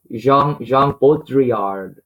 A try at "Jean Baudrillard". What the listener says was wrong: Usually don't pronounce the D.